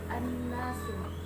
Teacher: Yang kedua an-nasu, hukumnya guna musyaddah karena ada huruf nun yang bertasdid. Cara membacanya masuk dengan mendengung.